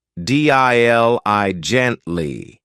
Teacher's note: This adverb has 4 syllables, and the stress is on the first syllable, dili gently.